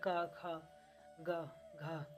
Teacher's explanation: आप इसको बोलेंगे तो आपको लगेगा कि ये कंठ गले से आवाज निकल रहा है